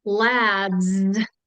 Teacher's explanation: the D is a voice sound so the S automatically takes on the voiced sound Z · the D is a voiced sound. So the S automatically takes on the voiced sound Z. So yeah, not only the co-articulation, but whether your vocal cords are already on or off is a huge factor.